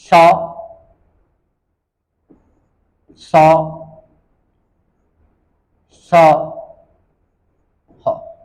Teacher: अब पढ़ेंगे ऊष्म संघर्षी, यानी कि ऐसी ध्वनियां जिनके उच्चारण में गर्म हवा संघर्ष के साथ बाहर निकलती है मुंह से। ऐसी ध्वनियां जिसमें गर्म हवा संघर्ष के साथ उच्चारित होती है, उन्हें ऊष्म संघर्षी कहते हैं।